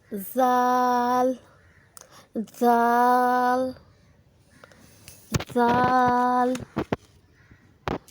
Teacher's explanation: जब ज़बान की नोक सनाया उलिया के सिरे से लगे तो ज़ाल अदा होता है, यानी सनाया उलिया के सिरे से थोड़ा सा बाहर ज़बान को निकालना है।